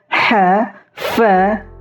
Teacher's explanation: ha, fa itu kedengaran sekali nafas yang keluar. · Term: hams